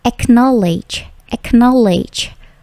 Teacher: Perhatikan bunyi k-nya juga plosif